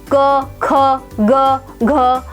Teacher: क ख ग घ आदि वर्णों का उच्चारण कंठ से होता है अतः इनका उच्चारण स्थान कंठ है और यह वर्ण कंठे वर्ण कहलाते हैं सभी वर्णों के उच्चारण